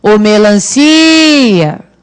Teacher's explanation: Percebam que é a sílaba si que realmente se estende, não é o a. Mas a nossa propensão é de achar que é o cia, porque o a também tem som forte. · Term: sílaba tônica